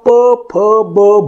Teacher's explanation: त्याचं कारण आहे की आपल्याला जेव्हा प फ ब भ ही व्यंजने उच्चारायची असतात किंवा हे स्वन उच्चारायचे असतात, तेव्हा आपण ते ओठाच्या माध्यमातून, त्याला ओष्ठ्य म्हटलं जातं, म्हणून ओठाच्या माध्यमातून त्याचा उच्चार करत असतो. फुफ्फुसातून बाहेर पडणारी हवा आपण ओठापाशी अडवतो आणि ओठाच्या माध्यमातून अडवल्याच्या नंतर अचानकपणे ती अडवून ठेवून त्याचा स्फोट करतो, म्हणून प तयार होतं, फ तयार होतं.